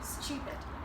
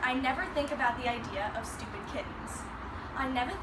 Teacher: sometimes T sounds can become a CH in words like stupid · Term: received pronunciation